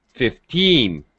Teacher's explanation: the pitch rises on the second syllable. · When you say teen numbers, the teen at the end is stressed, so we have to rise our pitch.